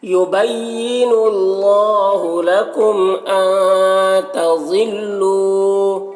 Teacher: تظلو ضاد کو پور پڑھیں گے, اور لو میں واو مدہ ہے, اسے 1 الف کے برابر کھینچیں گے · نون کے آواز کو ناک میں چھپا کر پڑھیں گے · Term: اخفا